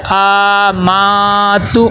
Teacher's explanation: حمزہ کے اوپر کھڑا زبر ہے، اس کو ایک الف کے برابر لمبا کرنا ہے